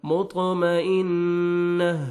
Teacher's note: double sound آئے گا، مطمئن، نون مشدد ہے، غنہ کریں گے، لاسٹ میں تا کو ہمیں چینج کریں گے، ہا کا ساؤنڈ آئے گا